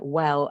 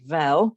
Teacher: regularly pronounces a w sound as a v sound, for example, so saying a word like well as vel, then it's much easier to adjust your listening to that speaker because you know that's something that they might do.